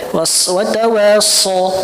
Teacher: so yang tanpa memonyongkan bibir bahkan lebih tebal ya · Nah karena saya juga sekarang akhirnya dapat sanad juga yang nggak monyong ya, waswatawaso dan ketika lihat dalilnya di Matan Jazari memang nggak ada ya isyarah untuk memajukan bibir itu nggak ada karena letak makhraj shad itu lidah ya, ujung lidah ini di gigi seri bawah so satu tempat dengan huruf sin dan huruf za satu tempat so sa za satu tempat, cuman dia punya sifat yang beda-beda ya, ada yang tebal ada yang tipis dan seterusnya. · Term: huruf shad